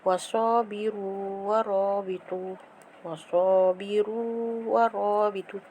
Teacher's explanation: waw mati depan ru, lepas tu depannya ada huruf waw, huruf yang sama. Dia tak boleh idghamkan sebab hukumnya adalah mad asli. Sabiru, waw mati depan ru, itu adalah mad asli.